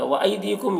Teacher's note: यहाँ पर आई में या लीन है, इसे जल्द पढ़ना है, और दी में या मद्दा है, इसे 1 अलिफ के बराबर खींच कर पढ़ेंगे।